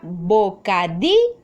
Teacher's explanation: ¿Dónde hago mayor fuerza de voz? Sí, en di. Entonces, la sílaba tónica es di.